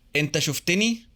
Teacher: When the suffix ni is added, it results in a cluster of 3 consonants. But remember, in Egyptian Arabic that's not allowed, so a short vowel is inserted. The vowel matches the one in the suffix.